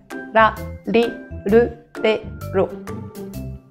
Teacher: le son R pour nous, c'est entre le R roulé et le L. Un petit peu comme en espagnol.